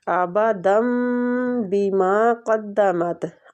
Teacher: نون تنوین کے بعد با آ رہا ہے تو ادھر ہم اقلاب کریں گے۔ اقلاب کا معنی ہوتا ہے بدلنا، جس طرح ہم دن کی بجائے دم پڑھ رہے ہیں، ٹھیک ہے، تو اقلاب کا معنی بدلنا ہوتا ہے، تو اس کو آپ نے نون تنوین کے ساتھ بدل کے پڑھنا ہے میم کے ساتھ، ٹھیک ہے۔